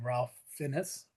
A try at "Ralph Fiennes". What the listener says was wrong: Ray Fiennes, actually. it's Ray Fiennes is how you he pronounces his name completely different from how it's spelled.